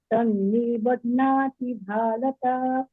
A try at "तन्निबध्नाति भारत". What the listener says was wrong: नी पे कम रुकिएगा, तन्निबध्नाति भारत, बाकी सब ठीक।